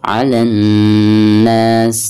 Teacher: bila mana ada alif lam lalu berhadapan dengan salah satu huruf syamsiah, maka alif lam tersebut itu tidak dianggap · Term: alif lam syamsiah